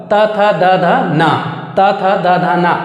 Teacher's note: Just जीभ किसमें touch कर रहा है, दांत में, इस वजह से इसे दंत वर्ण कहा जाता है।